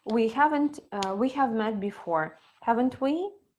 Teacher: The intonation falls, so you almost sure that you've met. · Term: falling intonation